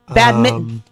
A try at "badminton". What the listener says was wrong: No, because you're pronouncing the T. You're pronouncing the T. I'm saying badminton.